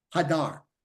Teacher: So the accent's on the back of the word on the dar.